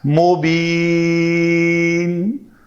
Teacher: اگر تنوین کو ساکن کریں گے تو یہ ساکن جو ہے سبب مد بن جائے گا، تو اس لیے ہم اس کو لمبا کر کے پڑھتے ہیں مبین۔ بھلے ہی اس کے اوپر اس طرح کی وہ جو یا کے اوپر مد ہے اس شکل کا کوئی علامت نہیں ہے، لیکن چونکہ قواعد پورے ہو گئے اس لیے اس کو لمبا کرتے ہیں۔